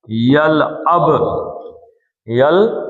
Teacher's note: با ساکن ہو گئی تو اس کا کلکلا ہو گیا